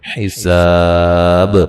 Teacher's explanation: حساب، سین کو باریک سیٹی سے ادا کریں گے اور یہ الف مدہ ہے، اور وقفاً بڑی مد کے ساتھ وقف کر سکتے ہیں، اور با پہ قلقلہ کریں گے، وقفاً با کو واضح کریں گے، یعنی کہ قلقلے کو واضح کریں گے